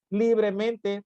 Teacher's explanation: Libremente, palabra sobresdrújula por estar acentuada en li. Si se dan cuenta, si pronunciamos la palabra libremente, nos damos cuenta que en li es donde recae precisamente el acento prosódico.